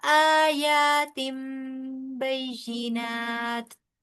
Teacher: इकलाब का कायदा होगा, नून की आवाज को मीम के साथ बदल देंगे